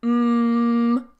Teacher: the noise is coming out of my nose mmm again the noise is coming out of my nose and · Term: nasal sound